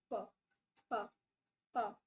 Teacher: अगर वो वाइब्रेशन नहीं है मतलब वो जो आपका ग्लोट्स है ग्लोटिस है उसके अंदर बहुत ज्यादा स्पेस है तो there won't be any vibration